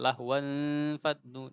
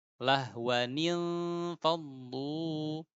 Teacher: Jadi lahwan faddu, jadi rancu. Nah, maka tanwinnya harus dihidupkan jadi ni. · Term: iltiqa as-sakinain